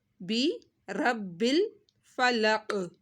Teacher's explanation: رب با کے اوپر تشدید ہے، با دو دفعہ پڑھا جائے گا